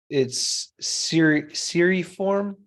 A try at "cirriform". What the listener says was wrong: Cirriform, yeah. Yeah, no, it's not a long E, that middle vowel there.